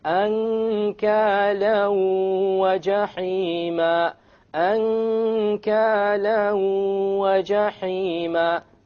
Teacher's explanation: You merge the tanween along with the waw and you move on. You don't pronounce the end sound and you have a ghunna. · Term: idgham with ghunna